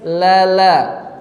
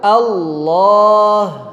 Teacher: Kalau yang tipis menyentuh ujung lidah, tapi masih dominan sisi lidahnya. Tapi ketika tebal justru terbalik. Yang dominan malah ujung lidah. Bahkan kalau kita tahan di makhraj asalnya, huruf lam tidak menjadi tebal. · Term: lam tipis